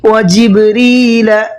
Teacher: را کو باریک پڑھیں گے، منہ بھر کے نہیں پڑھیں گے، پر کر کے نہیں پڑھیں گے۔